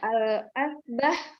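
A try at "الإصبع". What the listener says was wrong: Itu ada hamzahnya di bawah. Berarti bacanya kasroh. Al-isba'u.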